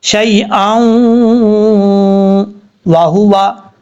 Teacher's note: تو یہاں پر 1 الف کی مقدار غنہ کریں گے. یا لین ہے, شین یا زبر شی, اس یا کو لمبا نہیں کریں گے, شی واہو وا, اس طریقے سے پڑھا جائے گا.